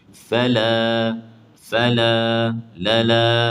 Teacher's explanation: alif dibaca nipis, tarkik, kerana sebelumnya huruf lam nipis. Fala, lala, nipis sahaja.